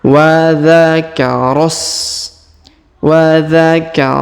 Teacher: Jadi bukan e huruf ro Bukan dibaca Dua harakat ya tapi huruf ro langsung sambung ke huruf sa yang sukun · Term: Hamzah wasal